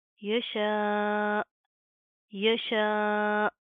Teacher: وقف کی صورت میں کہ حمزہ کے اوپر جزم آئے گی تو ہم یہاں پر کیا کریں گے، جھٹکا دیں گے، ٹھیک ہے؟ الف کے اوپر مد آ رہی ہے، اس کو لمبا کریں گے، کھینچ کر پڑھیں گے۔